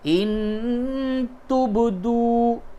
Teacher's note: با میں قلقلہ کیجئے اور واو مدہ ہے، اس کو کھینچئے، اور نون ساکن کے بعد تا ہے، اس جگہ پہ اخفا کیجئے۔